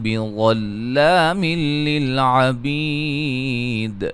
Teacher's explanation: نون تنوین کا ادغام بلا غنہ ہوگا، بی یا مدہ ہے.